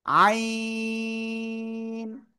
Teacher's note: গলা চেপে 4 আলিফ টানে উচ্চারণ করতে হবে